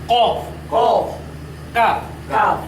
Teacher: জিহ্বার গোড়া এবং সেই বর্গর উপরের তালুর সাথে লাগাইয়া এই অক্ষরটি উচ্চারিত হয়